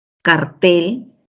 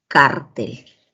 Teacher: el acento en cartel está en la última sílaba mientras que en cartel en la penúltima sílaba